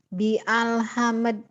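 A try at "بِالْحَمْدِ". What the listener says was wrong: Bial mana alnya? Itu hamzahnya nggak bunyi ya. Itu namanya hamzah wasol. Hamzah wasol itu apabila disambung nggak bunyi. Ini kan a nih, alhamdulillah nih. Yang ini nih ya. Kamu jangan baca, tadi kamu benar baca di sini.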